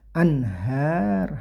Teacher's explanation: nun sukun bertemu ha, ini namanya idhar, nggak boleh dibaca dengung, harus dibaca jelas ya. anhar, hanya panjangnya satu alif atau dua harokat, ini namanya mad tabi'i karena ada fathah berdiri.